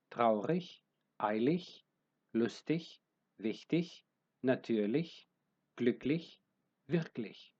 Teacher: Τα καταληκτικά ig όπως και η ch προφέρονται όπως η δεύτερη μορφή του ch, δηλαδή ουρανική.